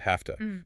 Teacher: The V sound in have is unvoiced to an F sound hafta because it precedes the hard T sound of to.